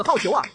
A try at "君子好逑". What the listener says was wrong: 不 对 ， 黑 金 这 个 不 对 ， 这 里 不 能 读 第 4 声 ， 得 读 第 3 声